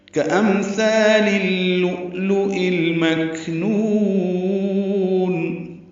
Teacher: کأمثال اللؤلؤ المکنون، کاف باریک، امثال میں میم ساکن پہ اظہار، ثا الف مدہ، 2 حرکات لمبا